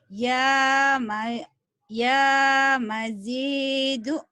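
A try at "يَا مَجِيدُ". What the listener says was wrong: J-nya panjang, Bu.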